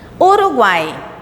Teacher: Você percebe que quando falamos, o som das 3 vogais é pronunciada juntas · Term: tritongo